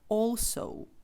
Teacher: наприклад T also Зверніть увагу що all ми читаємо All але далі буква о у відкритому у складі і це має бути also тому обов'язково це його треба дотягувати